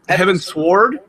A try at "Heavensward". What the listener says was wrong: It's not Sword. It's Heaven's Ward. Like I'm warding off danger.